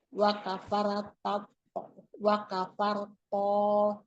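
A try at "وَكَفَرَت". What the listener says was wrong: Bukan wa kafarto. Ro-nya patah ibu. Wa kafarat.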